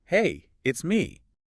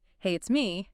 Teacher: And if you went up at the end, hey, it's me, that would sound like a question, like you're unsure if the person knows who me is.